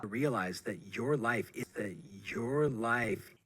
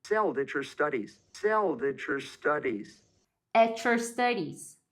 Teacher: O T e o Y interagiram e viraram um som de ch.